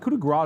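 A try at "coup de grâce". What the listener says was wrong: Yeah, you don't pronounce the S there.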